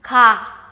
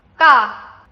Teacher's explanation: The first sound is more relaxed, right? And your tongue should be flat, flat. The second sound is tighter and more compact.